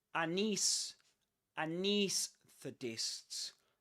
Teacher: It's like we begin with a schwa sound, right?